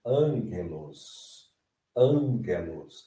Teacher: Ele está nasalizando esse alfa. Então, é como se fosse, na transliteração para o português, um N.